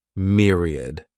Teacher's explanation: has three syllables and the stress is on that first syllable